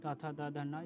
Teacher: त थ, द ध न इसका उच्चारण स्थान दंत होता है